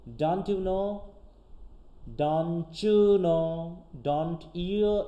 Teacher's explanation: ইয়ে sound can combine টু become the অ্যাফ্রিকেট চ sound